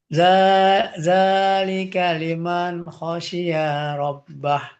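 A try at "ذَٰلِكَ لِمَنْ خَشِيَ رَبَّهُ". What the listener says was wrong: Ya-nya sekarang yang kepanjangan.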